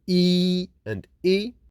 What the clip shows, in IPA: i: and i